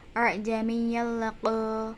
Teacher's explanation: terdapat bacaan idgham bila guna sebab tanwin bertemu dengan lam